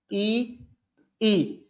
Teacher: जीवा का जो आगे का भाग है वह थोड़ा क्रियाशील हो जाता है, एक्टिव हो जाता है।